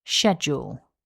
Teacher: this word has two syllables and the stress is on syllable one